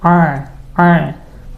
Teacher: Kalau huruf ain kan dari tengah tenggorokan suaranya